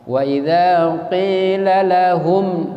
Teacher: Nah, kalau terkait dengan bacaan tadi, mim ketemu dengan huruf lam, berarti izhar syafawi ya. Cara bacanya berarti mimnya tidak boleh dengung ya, harus dibaca jelas.